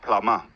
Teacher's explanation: in British English, especially when the R is at the end of the word, you mostly don't pronounce it